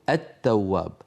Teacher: الشمسيه لا نقول التواب بل نقول التواب ما اصل هذه المشدده اصلها لام ادغمت في تاء لام التعريف ادغمت في التاء · أصلها لام أدغمت في تاء، لام التعريف أدغمت في التاء